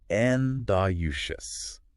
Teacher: And the emphasis is on the first syllable.